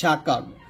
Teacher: যেমন এখানে শিন জবর শা, কাব জবর কা, শাকা, র জবর র, শাকা র আছে, যদি আপনি থামেন তাহলে বলতে হবে শাকার। এই যে র জবর রটা, এই রটা সাকিন হয়ে যাবে, শাকার বলতে হবে।